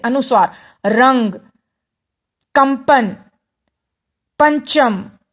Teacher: अनुस्वार बोलते हुए थोड़ा कंपन होता है